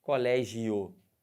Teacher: Eu estou partindo de quem? Do I para o O. O que eu estou fazendo? Eu estou subindo, eu estou crescendo. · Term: ditongo crescente